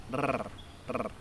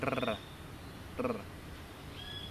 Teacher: your tongue comes up to the top of your mouth near the front and you pass air over it to cause it to go rrr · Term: trill the R